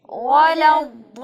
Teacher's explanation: حرف ضاد کی ادائیگی میں صفت استطالت کو برقرار رکھنا ہے اور ضاد کو موٹا کر کے بھی پڑھنا ہے، اور اس کے بعد آپ نے مد کا اہتمام کرنا ہے، چونکہ یہاں پہ مد پائی جا رہی ہے.